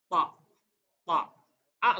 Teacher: O dalam pelapalan bahasa Arab hilangkan huruf o di benak kita th a-nya tebal tapi bukan o